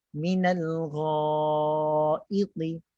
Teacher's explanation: Yang tinggi hanya pangkal lidah. Bibir tu kekal macam biasa. Kita maintain macho tu.